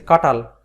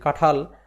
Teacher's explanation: শব্দের মধ্যে অল্প প্রাণ ধ্বনি মহাপ্রাণ ধ্বনিতে পরিণত হবে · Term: পিনায়ন